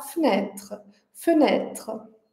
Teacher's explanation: Então, o primeiro e a gente mantém bem curto, bem fraco, bem arredondado. E o último e desaparece, né? porque ele tá em posição final, depois de um é uma consoante R, então ele vai desaparecer.